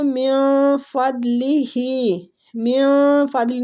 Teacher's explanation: نون ساکنہ کو ہم نے اخفا کے ساتھ پڑھنا ہے، چھپانا ہے اس کو، دواد پور حروف ہے اس کو پور پڑھنا ہے۔